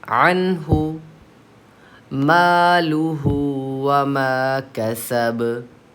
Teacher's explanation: हा आ रहा है नून साकिन के बाद, तो नून को ज़ाहिर करके पढ़ना चाहिए. यहाँ पे हम गुन्ना नहीं करेंगे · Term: इज़हार